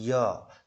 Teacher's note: जैसे य जो है, य का उच्चारण स्थान तालुस होता है, य आप बोल के देखो तो तालुस य, तो यानी कि जीभ और तालु के ऊपर के बीच के हिस्से से वायु का प्रवाह हो रहा है, और वायु का जो प्रभाव पड़ रहा है वो हमारे तालु यानी जीभ के ऊपर वाले हिस्से से पे पड़ रहा है। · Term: अंतस्थ व्यंजन